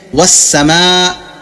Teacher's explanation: جب میں سین کی ادائیگی کرتا ہوں تو آپ غور کریں گے ساتھ میں ہوا بھی خارج ہو رہا ہے منہ سے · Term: صفت ہمس